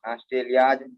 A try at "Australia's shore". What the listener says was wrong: Apostrophe S भी है ना? Australia's shore.